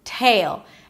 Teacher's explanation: An aspirated T, a long A as in day, and a dark L. Tail sounds like you're adding a Y sound right before the L.